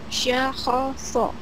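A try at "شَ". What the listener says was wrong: Salah, ada titiknya.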